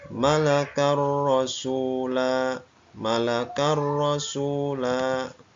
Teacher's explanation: rasula ini contoh fathatain bertemu dengan huruf ro ya sama ya suara tanwinnya hilang dan masuk ke dalam huruf setelahnya